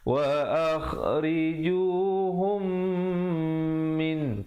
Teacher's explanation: Mim mati bertemu mim hukumnya idgham mislan saghir, bacakan dengan kadar dengung 2 harakat.